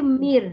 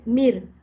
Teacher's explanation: Baca mir. Nun hilang. Bunyi nun tak ada ya. Total hilang ya. Hilang maksimum ya. Mir. Tak ada bunyi nun dah. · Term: idgham bila gunnah